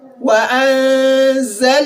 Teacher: Letter nun has been elongated for the duration of only 1 second, which is your al-mad al-asli.